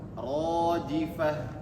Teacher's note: Kemudian di sini mad tabi'i. Alif sebelumnya ada fathah, maka panjangnya 2 harakat. Rajifah. Dua harakat saja.